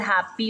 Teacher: हैप एक सिलेबल है, then you take a break, एक पॉज आता है वहाँ पर, उसके बाद पी, फिर हैप्पी, तो यहाँ पर वी हैव 2 syllables, ठीक है।